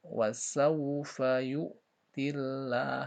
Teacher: Wasaufa yu'tillah, nah, tillah kembali ada kalimat Allah sebelumnya kasrah. Berarti ditipiskan bacanya.